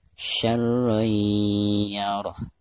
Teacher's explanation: Perhatikan di atas ro ada tanwin fathatain lalu berhadapan dengan salah satu huruf idgham, di sini huruf ya, dan termasuk idgham bigunah. Maka cara membaca tanwin yang ada di atas ro tersebut itu harus diidghamkan disertai dengan gunah